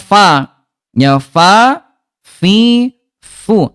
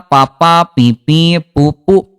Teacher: huruf fa, tempat keluar hurufnya bibir dalam bagian bawah disentuhkan dengan ujung gigi seri atas